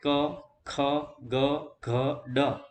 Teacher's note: તો કે કંઠ્ય વ્યંજનો કોને કહેવાય? તો જે વ્યંજનોનો ઉચ્ચારણ કરતી વખતે જીભની પાછળનો ભાગ ઊંચો થઈ તાળવાને સ્પર્શે